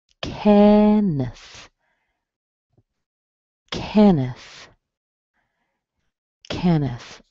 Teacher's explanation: we have a nice E sound, and then you have a schwa